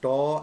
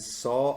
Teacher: taw and saw are both voiceless alveolar sounds, but they differ in their manner of articulation, that is, in the way they are pronounced.